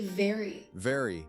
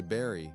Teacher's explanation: Now notice your bottom lip touches your top teeth.